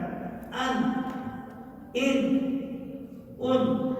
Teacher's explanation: yaitu ujung lidah melekat ke langit-langit, diiringi dengan sifat tawassut bainar rifa wa syiddah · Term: nun mati dan tanwin